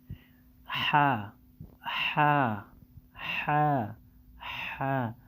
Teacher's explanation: হাকে গলার মধ্যে একটু চাপ দিয়ে উচ্চারণ করতে হবে এবং 1 সেকেন্ড টেনে পড়তে হবে